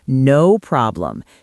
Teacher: She laughs and stresses the word no to show she understands the humor.